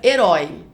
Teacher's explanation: Herói é uma palavra oxítona que tem a última sílaba mais forte. Ela tem aí eh a o ditongo aberto, oi, herói.